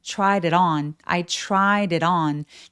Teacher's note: 입술 쭉 내밀고 tried it on 하면서 d나 t가 지금 모음 사이에 계속 끼어 있기 때문에 굴러가는 소리를 냅니다.